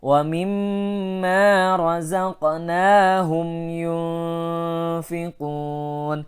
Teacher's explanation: Ikhfa awsat dengungnya pertengahan. Tidak dekat, suaranya tidak dekat dengan nun dan juga tidak terlalu jauh dengan nun.